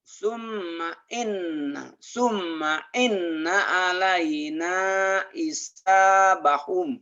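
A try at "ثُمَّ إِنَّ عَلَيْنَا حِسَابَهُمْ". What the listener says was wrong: Bukan i tapi hi, hisa. Lagi.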